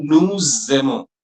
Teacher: That final S, in Nu, once it is followed by a vowel, the sound which is usually silent, gets connected to the next vowel, and we pronounce it like a Z.